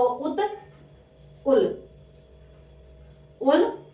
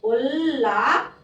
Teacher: त का हमें ल में परिवर्तित करना है